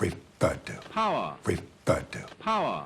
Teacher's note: so he's dropping his r's after vowel sounds